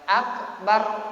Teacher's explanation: Tapi kalau dibaca apa menghadapi apa fathah menghadapi ra mati, dhamma menghadapi ra mati, maka ra-nya dibaca tebal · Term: tafkhim